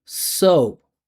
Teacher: the pitch of the vibration goes up and goes down.